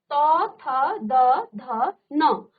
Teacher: ध न तो देखिए जो दांत का एक जड़ है दंत्य कहीं ना कहीं ये आपके दांतों को स्पर्श कर रहा है दांत या दांतों के जड़ों को वो स्पर्श कर रहा है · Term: दंत्य वर्ग